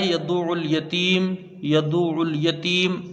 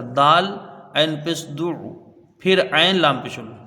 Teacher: یدع ہے نا، یہاں دیکھیں، یا کو جلدی پڑھا جائے گا، دال کو عین سے ملائیں گے، عین یہاں پر مشدد ہے